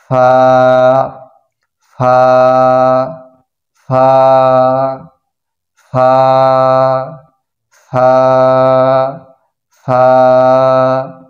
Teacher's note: মাখরাজ হচ্ছে নিচের ঠোঁটের পেট সামনের উপরের দুই দাঁতের আগা হইতে ফা হরফটির সিফাত মোট ছয়টি হামস বাতাস চালু হামস বাতাস চালু